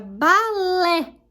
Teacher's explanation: o lé é a sílaba tônica, é a última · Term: oxítona